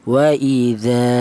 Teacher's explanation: panjangnya yaitu satu alif atau dua harakat atau dua ketukan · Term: mad thobi'i